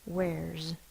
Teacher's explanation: We drop off the beginning of the is or the has and put an apostrophe S. It says the Z sound because it's following a voiced consonant.